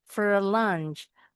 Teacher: kalau dalam kalimat bunyinya jadi f enggak lagi kayak angka empat